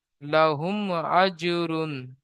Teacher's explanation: মিম সাকিনের পরে বা মিম ছাড়া অন্য অক্ষর হামজা এসেছে। তাই মিমকে বিনা গুন্নায় জাহির করে তাড়াতাড়ি পড়তে হবে। একে ইজহারেশাফাবি বলে।